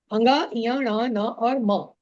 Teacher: सभी वर्गों के पंचम वर्ण इनका एक स्थान और होता है वो होता है नासिका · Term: नासिक्य वर्ण